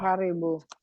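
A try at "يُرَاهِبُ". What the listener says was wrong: Jangan dibalik. Sering kebolak-balik hurufnya.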